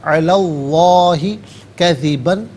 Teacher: لام پر زبر ہے تو اس میں اللہ کے حرف لام کو پر کر کے پڑھا جائے گا